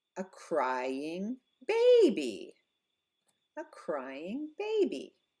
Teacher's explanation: longer vowel louder volume higher pitch · we go up on the noun